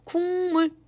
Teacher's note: 앞에 있는 기역이 이응으로 바뀌고 있는 거죠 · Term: 불완전 동화